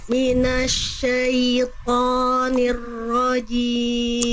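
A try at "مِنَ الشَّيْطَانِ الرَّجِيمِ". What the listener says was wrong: rnya tebalkan lagi sedikit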